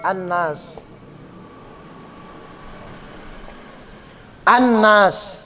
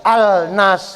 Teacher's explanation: An-Nas itu alif lamnya nggak terbaca, padahal dia ada alif sama lam kan gitu. An-Nas, An-Nas, tapi nggak, ininya nggak hidup alif lamnya. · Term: al-syamsiyah